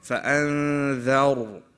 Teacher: dhal is a light letter, but the ra is a heavy letter.